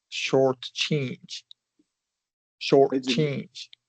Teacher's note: We're going to we're going to emphasize the second syllable. Your pitch is going to go up on the second syllable.